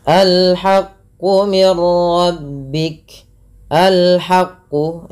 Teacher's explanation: Dan di sini ada alif lam qamariah. Dibaca dengan jelas suara lamnya.